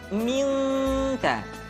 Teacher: Ketemu kaf maka dominan kepada huruf eng, minka. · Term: ikhfa